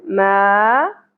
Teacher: ما زبر کے ساتھ الف، حرف مدہ ایک الف کے برابر کھینچیں گے